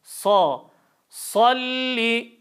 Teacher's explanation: var bir Elif tutuyoruz sad harfi Eee Safir sıfatı olan harf alt ön dişlerden çıkıyor dilimizin ucu alt ön dişlerin dibine değer dil ortası ağız boşluğuna doğru yükselir kalın harf